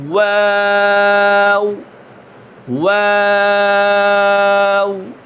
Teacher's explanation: پہلے بھی ہونٹ گول، آخر میں بھی ہونٹ گول، اور بیچ میں مد بھی کرنی ہے